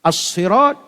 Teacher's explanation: As-sirat alif lam syamsiah, huruf sad ra ditebalkan